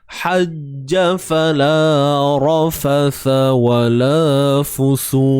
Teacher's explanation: Ha pedas tuan-puan, tengah kerongkong kita sempit kan.